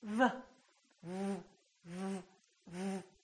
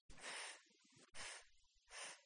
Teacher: V is a voice sound and F is voiceless